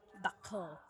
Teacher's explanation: if I say it with an American accent, dakal, I'm touching the tip of my teeth